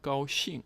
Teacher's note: first tone followed by fourth tone, meaning happy or glad